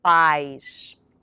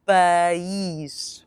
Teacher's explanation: we have two syllables, pa and ish. Here, remember to stress that I as a double E sound in English. Now repeat after me, país.